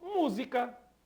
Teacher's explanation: Nós temos o s entre a vogal u e a vogal e desta forma nós temos esse S representando o fonema Z e não o fonema do s